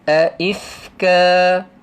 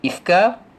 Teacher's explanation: berhenti dengan membacanya dalam panjang mad asli 2 harakat